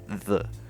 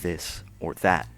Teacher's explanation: The other letter, eth, represents the voiced dental fricative, the, as in this or that.